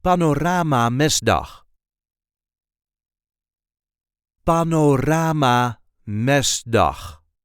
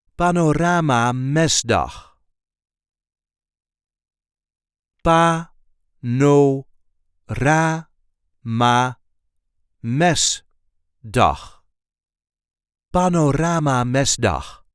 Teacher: So there is a light emphasis on the first syllable of the second word.